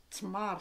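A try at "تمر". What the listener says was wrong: C'est pas tmar. tmar. Et on roule le R.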